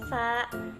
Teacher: organ yang berkontribusi di Gigi atas dan Gigi bawah yaitu terdapat di ujung lidah